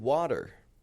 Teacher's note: a flap T is a light D sound that comes between two vowels. It's got a very soft sound, as in the word water.